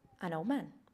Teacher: when three consonants are found together we then take away the D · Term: too many Continent rule